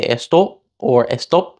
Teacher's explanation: a Spanish speaker might say esto or estop where they don't pronounce the P at all or they close their lips and just don't release the articulation